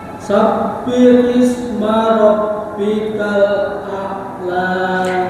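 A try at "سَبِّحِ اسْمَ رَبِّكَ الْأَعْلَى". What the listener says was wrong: Hnya sama kafnya, Bapak. H-nya kurang lembut.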